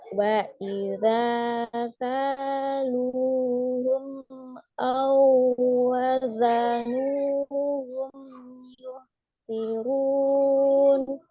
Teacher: Lu-nya juga panjang. Zalnya panjang, kafnya panjang, lamnya juga panjang.